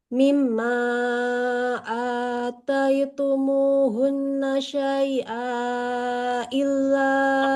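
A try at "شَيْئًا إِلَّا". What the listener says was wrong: Nggak panjang. Kalau dilanjut nggak boleh dibaca panjang. Ataitumuhunna syai'an illa. Jadi syai'an ini boleh panjangnya kalau berhenti saja.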